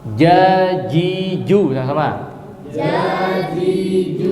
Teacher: huruf yang dia memiliki karakter syiddah, suara tertahan, dan juga jahr, nafas tertahan, ya. Coba jim, jajiju, sama, jajiju, ya, masuk jahr kan, ya, tidak ada nafas yang mengalir.